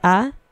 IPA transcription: a